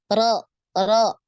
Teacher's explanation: makhraj huruf ro itu di awal punggung, ujung lidah. Jadi naik sedikit dari ujung lidahnya tadi.